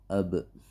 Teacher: Di dalam makhraj dua bibir ini atau asy-syafatain ini keluar huruf ba dan huruf mim, atau dibacanya ma, ba, ma. Untuk ba ini ketika sukun itu dikolkolahkan atau hurufnya dipantulkan.